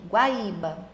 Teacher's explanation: Primeiro veio o som da semivogal, que é o som mais fraquinho, e depois veio o som da vogal. Sempre quando eu tenho um som mais fraco e depois um som mais forte, o meu ditongo vai ser um ditongo crescente.